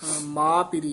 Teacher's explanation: ਮਾ ਪਿਰੀ ਪਾਠ ਉਚਾਰਨ ਕਰਨਾ ਨਾਸਕੀ ਨਹੀਂ ਉਚਾਰਨ ਕਰਨਾ ਮਾ ਨਹੀਂ ਕਹਿਣਾ ਇਥੇ ਇਥੇ ਉਚਾਰਨ ਮਾ ਪਿਰੀ ਕਰਨਾ ਛੰਤ ਜਿਨੀ